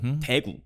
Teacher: 대구 dialects tend to start with like a heavy accent on the front.